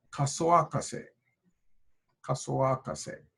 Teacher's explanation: So the second a of kasa and the o of the object marker are being reversed.